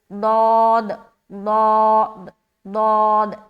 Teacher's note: زبان کا بغلی کنارہ کو اوپر کی جو داڑھ ہے نا اس میں ٹچ کرتے ہوئے نکالیں گے ضاد کو